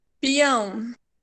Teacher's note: nós não temos aqui um tritongo, nós temos um hiato e um ditongo depois.